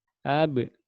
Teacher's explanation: Berat kalau disukun saja, harusnya dipantulkan. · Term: qalqalah